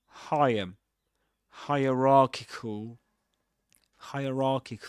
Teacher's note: this word has two stresses a primary stress on ra and a secondary stress on the first syllable